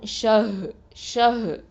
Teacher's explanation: ஹ வந்து எங்கேருந்து வரணும், அகசல் ஹல்குலேருந்து வரணும்